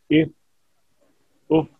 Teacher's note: 12वां मखरज नीचे का लब और सनाया उलिया का किनारा, इससे फा निकलता है।